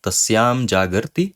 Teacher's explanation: So this is the anusvara sandhi. The padanta makara is changing into anusvara.